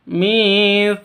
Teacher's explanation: tsa panjang dua ketukan. Karena ada alif diawali dengan fathah. Mad asli atau mad thabi'i.